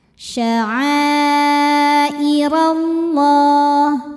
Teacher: Lam jalalah dibunyikan secara tafkhim karena huruf sebelumnya berbaris fathah maka dibacanya tebal.